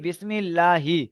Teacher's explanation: মিমের নিচে জের এসেছে, জেরটি হলো হারকাত, হারকাতকে তাড়াতাড়ি পড়তে হয়, টান দেওয়া নিষেধ। আল্লাহ শব্দের ডান দিকে জের এসেছে, তাই আল্লাহর লামকে বারিক পড়তে হয়। লাম খাড়া জবর, খাড়া জবরটি আলিফ মাদ্দার সমতুল্য, আলিফ মাদ্দাকে একালি পরিমাণ টান দিয়ে পড়তে হয়, তাই একালি পরিমাণ টান দিয়ে পড়তে হয়।